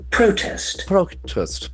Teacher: as a noun, the accent falls on the first syllable